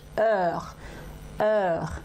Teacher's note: j'ouvre bien la bouche, heure, et ma bouche est un peu arrondie